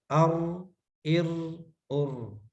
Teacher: تکرار ہوتا ہے، وائبریٹ کرتی ہے زبان ادا کرتے ہوئے. او او او الرحمن او ار ار ار ار نہیں کرنا، ہلکی سی وائبریٹ کرے.